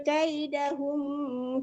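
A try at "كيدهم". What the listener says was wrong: Kaidahumnya tidak dengung ya Allah. yaj'al kaidahum, humnya itu nggak dengung ya. yaj'al kaidahum fi, jangan ditahan di kuhumnya, tidak dengung.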